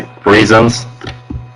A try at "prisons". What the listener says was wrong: Prisons. Yeah, because you really went too far toward the parent vowel with like sound. It sounded more like prisons. Prisons.